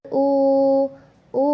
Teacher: wau mati didahului oleh huruf yang ber baris dommah. Jadi dibaca dua harakat. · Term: madobii wau